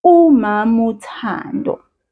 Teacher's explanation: Now, then I remember I said to you, it's 2 parts, umama and uthando. The word umama, the last vowel, I dropped it. I didn't say it. I just simply said umamu.